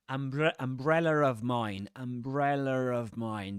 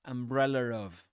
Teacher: there's no R in the spelling, but you will say it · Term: intrusive R